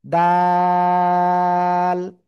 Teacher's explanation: জিহ্বার আগা উপরের 2 দাঁতের গোড়ায় লাগাবো, লাগিয়ে 3 আলিফটা নিয়ে উচ্চারণ করব।